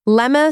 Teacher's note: Lemme survives because dropping the T sound and blending let and me doesn't confuse anyone.